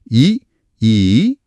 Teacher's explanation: வாய் திறக்கும் முயற்சியோட நாக்கோட அடி ஓரமானது மேல்வாய் பல்லை பொருந்தும் முயற்சியால பிறக்குது. · நாம லேசா சிரிக்கிற மாதிரி வாயை அகலமா விரிக்கும்போது நாக்கோட ஓரங்கள் போய் மேல் பற்களோட உள்பக்கத்தை உரசுது. அந்த உரசல் இல்லை என்றால் ஈ அப்படிங்கிற ஒலியே வராது போலியே.